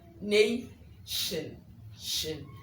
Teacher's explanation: The T in nation gives you the sh sound. So you go nation, shin.